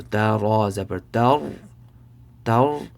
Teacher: So ra sakin with a zabar before it, it'll be full mouth, right?